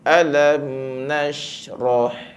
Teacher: Ini adalah mim mati yang bertemu dengan huruf nun. Jadi dia dibaca tanpa dengung. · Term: izhar syafa